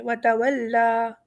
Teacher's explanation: یہاں پہ یا جو ہے وہ ایڈیشنل ہے، ہم یا کی کوئی ساؤنڈ نہیں نکالیں گے یہاں پر، لیکن لام کے اوپر کھڑا زبر ہے وہ اسے حروف مد بنا رہا ہے۔